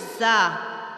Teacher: زا کے حرف کے اندر سیٹی ہے، اس کی آواز ہوتی ہے جیسے شہد کی مکھی کا ساؤنڈ ہوتا ہے، جیسے اس کی آواز ہوتی ہے زا۔